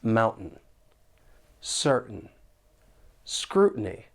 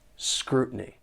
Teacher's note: a gladle t and the the sound comes from the throat your vocal cords are closing and that's stopping the flow of air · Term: glottal T